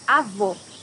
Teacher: Here you have a closed O.